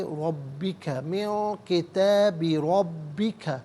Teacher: را پر زبر ہے، را کو پر کر کے پڑھیں گے. با مشدد ہے، جماؤ کے ساتھ پڑھا جائے گا.